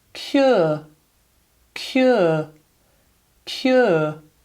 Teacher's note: I'm going foot, because look, same symbol. And then I'm ending it on a schwa.